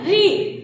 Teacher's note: तो आपका जीभ मुड़ रहा है तो री का जो उच्चारण स्थान होता है वो क्या होता है, मूर्धा